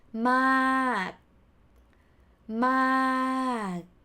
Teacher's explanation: so you end it with มาก but you don't pronounce the sound you swallow the ending sound